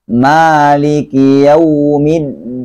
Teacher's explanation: Nah, riwayat Hafs itu bacaan mimnya panjang.